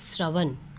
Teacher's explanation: श्र का उच्चारण स्थान तालु प्लस मूर्धा से होता है।